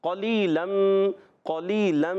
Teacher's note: یا مدہ ہے اس لیے ایک الف کھینچ کر ادا کریں گے